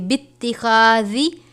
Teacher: تا ہے، اس کے اوپر تشدید ہے، تو ہم اس کو تھوڑا سختی سے پڑھیں گے